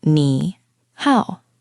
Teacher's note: Both of these words are actually the third tone. >> The third tone is the bouncy one, right? Your voice goes down and then back up. · The 3rd tone is the bouncy one, right? Your voice goes down and then back up, like when you're skeptical in English and say, "Really?" Yes, down and up. · When you put 2 third tones together, the first one magically changes into a 2nd tone, which is a rising tone, like you're asking a question.